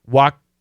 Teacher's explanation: Stop sound, walked, but we don't finish the T. Walked right through.